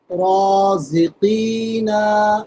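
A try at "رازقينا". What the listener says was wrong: নুনে টানবে না, ঠিক আছে।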